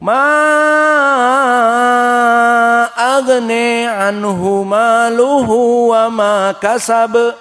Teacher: Maka qiraah Wars isba' dikenyangkan menjadi 6.